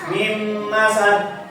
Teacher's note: Huruf nun dimasukkan ke huruf mim, kemudian ditahan 2 harakat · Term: idgham biguna